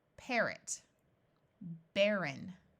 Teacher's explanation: it has a sound of what we call a schwa, which can sound like a short I or a short U.